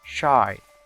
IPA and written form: ʃaɪ (shy)